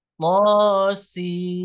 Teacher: Jadi setelah memanjangkan suara si 6 harokat, ikuti dengan suara mim bertasdid. Ya, selama 2 harokat. · Karena di depan ada suara mim. Nah, ketika nun sukun bertemu mim, maka ini terjadi hukum idgham, di mana suara nunnya tidak dibaca. Yang dibaca adalah suara mimnya.